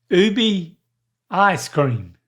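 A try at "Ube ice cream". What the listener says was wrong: So the BE is more like a BAE.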